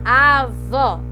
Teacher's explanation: E eu sei que ela é oxítona porque a mais forte dela é a vó, certo? E vó tá aqui, ó, é a última, avó.